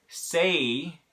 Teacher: why we spell it with an A and a why because that vowel is changing as you go through the word say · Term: diphthong